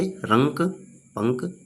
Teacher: अनुस्वार इनका उच्चारण करते समय वायु केवल नाक से निकलती है, जैसे रंक, पंक, ठीक है।